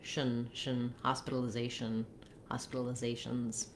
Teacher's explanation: Oh, similarly here, you'll see that I wrote a letter U like a schwa here in this last syllable, but we really go right from the SH to the syllabic N. So we have a syllabic L and a syllabic N in this word, trying to just move as quickly as you can from the sh to the n, shin, hospitalization, hospitalizations.